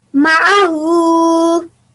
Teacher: you were trying to pronounce your ayn from your throat as well